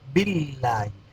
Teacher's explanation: لفظ اللہ سے پہلے زیر ہے، اس لیے لفظ اللہ کو باریک پڑھیں گے